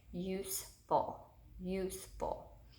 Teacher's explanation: we hear that long you in the first syllable